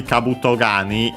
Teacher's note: The accent of Kabuto Gani as a whole is on the last mora of Kabuto. So another one of the typical spots for the accent for compounds, as we have seen. · we also have the change of the K of Kani into G, because it's the second word part of the compound.